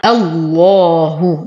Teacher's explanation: نغلظ اللام لأننا ابتدينا بهمزة الوصل مفتوحة، فإذا تغلظ لام اسم الجلالة جل في علاه، وانتبه لترقيق الها معها الله مع إتمام الضم.